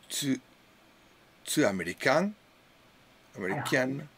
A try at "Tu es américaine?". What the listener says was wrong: Alors, don't forget le « et ».